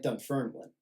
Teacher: a slight Scottish thing of, putting the emphasis on the second syllable